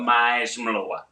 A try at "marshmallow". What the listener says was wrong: You give me a lot of A's. Can you take back a few A's?